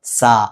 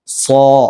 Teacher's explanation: എന്നാൽ സോ കണ്ടില്ലേ, സോ ഓ ഇങ്ങനെ ഒരു ഗൗരവത്തോടുകൂടി ഘനപ്പിച്ച് ഉച്ചരിക്കുന്നതിനാണ് തഫ്ഹീം എന്ന് പറയാം.